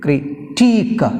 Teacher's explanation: In critique we have stress on last syllable teak.